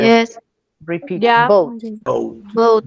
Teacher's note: es como una O de nosotros, casi. ¿Por qué? Porque disimuladamente también vamos a pronunciar una U.